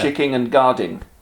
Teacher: Especially in the Midlands, people are hypercorrect and would say chicking and guarding.